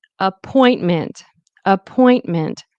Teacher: So point is what has the stress.